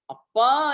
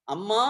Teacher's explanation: அப்பா என்று சொல்கிற பொழுது வன்மை வருகிறது அம்மா என்று சொல்கிற பொழுது மென்மை வருகிறது